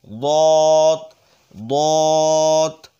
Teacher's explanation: জা সিন দুইটা একই জায়গা থেকে উচ্চারণ হবে জা সিন শিন সদ দত মোটা হবে জিহ্বার গোড়ার কিনারা ওপরের মারি দাঁতের গোড়ার সঙ্গে লেগে দত দত ত ত জ জ নরম হবে অর্থাৎ জিহ্বার আগাটা